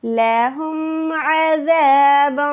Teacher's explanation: ہا جو ہے حلق کے نیچے والے حصے سے